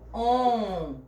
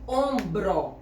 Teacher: Então, esse som desse M, a gente não escuta. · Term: dígrafo nasal